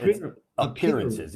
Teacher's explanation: the emphasis is on the second syllable, appearances